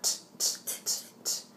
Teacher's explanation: the T the tongue goes up to the gum ridge above the teeth and then that stops the sound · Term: linguadental stop